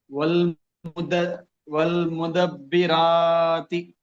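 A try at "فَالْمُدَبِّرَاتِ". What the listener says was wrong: మొదటి అక్షరంలో తప్పు చేస్తున్నారు.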